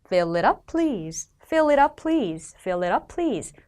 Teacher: Fill it up 이라는 단어가 각각 뭉쳐서 fill it up 이라고 됩니다.